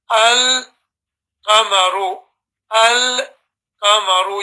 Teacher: You put a sukoon on the lam and you read the next letter separately.